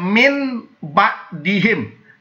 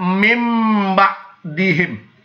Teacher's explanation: maka huruf nunnya tidak dibaca nun, tapi dibaca menjadi mim. Tidak dibaca min ba'dihim, tapi dibaca mim ba'dihim.